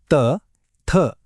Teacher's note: जीभ थेट दातांना लागते ना म्हणून हे दंत्य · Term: दंत्यवर्ण